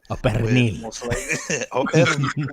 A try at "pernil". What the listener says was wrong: With the R. You got to roll the R.